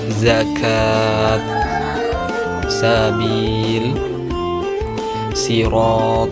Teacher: huruf zai sin shad tempat keluarnya ujung lidah menyentuh gigi seri bawah